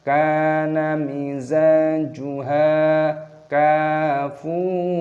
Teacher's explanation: Mad tabi'i panjangkan dua ketukan, kana mizajuha kafuro, kafnya dibaca panjang, ada tanda alifnya, panjangkan dua ketukan. Mad tabi'i, dan fa-nya juga dibaca panjang, ada wawu sukun, dibaca mad tabi'i dua ketukan.